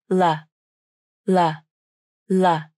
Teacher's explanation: the third way of pronouncing the light L is to bring the tongue tip out of the mouth, between the teeth. L, L, L. The lips do not participate in the pronunciation of the light L, so the lips can be relaxed or neutral.